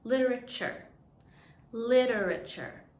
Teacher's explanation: in literature the t sounds like a ch